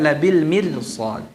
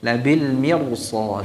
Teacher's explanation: setelah ra sukun yang didahului oleh kasrah ada huruf isti'la yaitu sad. Sehingga menjadikan ra tersebut dibaca dengan tebal.